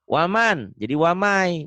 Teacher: Waman, jadi wamai, bunyi N-nya hilang, melebur ke Y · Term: idgom